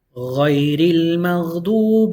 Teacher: You skip over that Alif or that Hamzatul Waslah. You go from the Ra Kasra to the Lam.